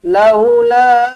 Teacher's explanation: Laula panjang empat ataupun lima harakat